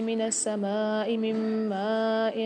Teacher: یہاں پر سما میں الف پر مد آ رہا ہے، یہاں پر 5 سے 6 الف میں دار کھینچ کے پڑھیں گے۔